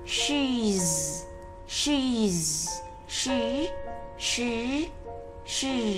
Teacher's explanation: Nhớ phải chu môi ra các em nhé, và đọc mạnh lên để hơi ra, cổ chúng ta thì không rung.